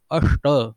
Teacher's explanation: देखिए श का उच्चारण कैसे जीभ टेढ़ी बनकर हुआ · और दूसरा जो श है उसका उच्चारण स्थान मूर्धा है, जो कि ट वर्ग का उच्चारण स्थान है। ट ठ ड ढ ट ठ ड ढ का उच्चार करते समय जिस प्रकार से हमारी जीभ टेढ़ी हो जाती है, वैसे ही इस श के उच्चारण में होती है।